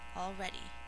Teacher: three syllables the second syllable is accented